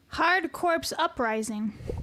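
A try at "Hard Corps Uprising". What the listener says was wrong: The P is silent. Hardcore Uprising, a phenomenal Xbox 360 game.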